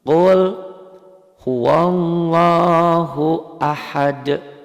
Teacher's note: Qul, alifnya nggak dibaca, kan nggak ada tanda bacanya tuh, karena nyambung di wasol.